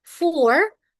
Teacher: When we use the American style, for, you can hear the letter R from my mouth. Is a for is American style, but in British, R and H is silent.